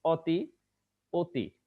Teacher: এখানে অটা ওকার হয়ে গেছে